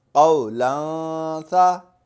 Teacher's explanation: دو زبر تنوین اور تنوین کے بعد حروف اقفا میں سے سا آ گیا تو یہاں غنہ کریں گے